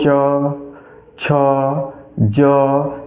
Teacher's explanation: तो जब च कहोगे तो जीभ जो है तालु में जाके सट रही है। कहो च छ ज तो जीभ जो है तालु में सट रही है।